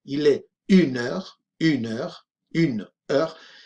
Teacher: cuando decimos la hora, el número y la palabra hora prácticamente se fusionan, se dice como un todo